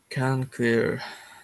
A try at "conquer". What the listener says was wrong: Remember, we don't want to say the Q-U. How do we pronounce it?